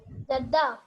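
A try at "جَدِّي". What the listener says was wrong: Jaddi. So this is zir. So this is jaddi and this is jaddati.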